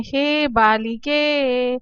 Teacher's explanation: अर्थात दीर्घ स्वर का जब हम उच्चारण करते हैं तो ह्रस्व से दुगना समय हमें दीर्घ स्वर के उच्चारण में लगता है और जब हम प्लुत का उच्चारण करते हैं तो ह्रस्व से 3 गुना ज्यादा समय हमें प्लुत का उच्चारण करने में लगता है